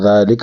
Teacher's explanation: فی یا مدہ یا ساکن آگے زیر ہے حل فی ذالک ذال پر کڑا ہے ایک الف کی مقدار اس کو کھینچیں گے ذالک لام کو باریک پڑھیں گے ذالک قسم لذی قسم تنوین